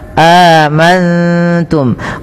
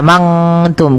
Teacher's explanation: Cara membacanya, nunnya samarkan kepada huruf ta. Amantum, bukan hanya amangtum. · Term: ikhfa hakiki